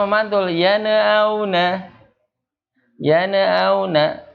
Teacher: Yaitu tadi dia memantul yan'auna, pengennya cepat, pengen disambung, ya tidak ada jedanya, jadinya memantul